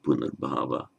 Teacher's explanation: And that's why, when after say followed by bhava, being, punarbhava, being again, rebirth, it resolves back into an R, not an O, so punarbhava.